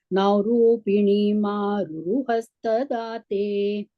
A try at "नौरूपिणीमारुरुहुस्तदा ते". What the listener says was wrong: That is hustadate. It is not hastadate. Hustadate.